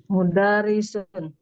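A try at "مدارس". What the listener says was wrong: Kalau mudarris itu dalnya pendek, Om. Kalau di sini Naam, dalnya panjang.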